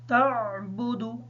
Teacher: عین کی آواز کو کلیئر کریں گے تاکہ حمزہ کی آواز ادا نہ ہو۔ دال کے بعد واو مدہ ہے، دال کو لمبا کر کے پڑھیں گے تھوڑا سا تاکہ واو سے اچھی طریقے سے ادا ہو جائے، نون حالت وقف کی وجہ سے ساکن ہی ہوگی۔